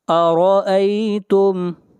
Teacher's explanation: آگے بڑھیے، آیت نمبر 28، قل، قاف، قل، قاف کو موٹا پڑھا جائے گا، ارأیتم، را کو موٹا پڑھیں گے، را کے اوپر زبر ہے